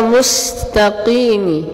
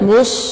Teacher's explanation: jangan menebalkan huruf sin, contohnya pada kata mustaqimi. Nah, mustaqimi, jangan mus, jangan, tapi mus, beda mus dengan mus.